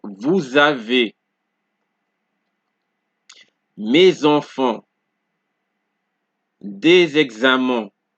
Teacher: So in this case, because the next word begins with a vowel, the S sound, the sound from the S is linked to the vowel, right? And it gives you a Z sound. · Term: liaison